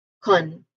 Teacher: the first syllable con, it is pronounced with a short U sound